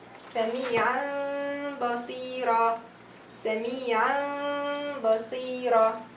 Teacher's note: noon sakina followed by letter ba. They are converted into mim. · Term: iqlab rule